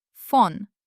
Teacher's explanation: press our upper teeth to our lower lip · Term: voiceless letter f